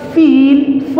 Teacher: f sound is a labiodental sound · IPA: /f/